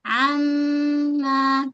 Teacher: dengung dulu dua harakat akmal naik suara ke rongga hidung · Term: wajibal ghannah, gunnah akmal